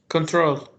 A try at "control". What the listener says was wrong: Okay, now it sounded to me like you actually put the stress on the end. So control is a very common way to say it, like you're saying it with a stress at the end.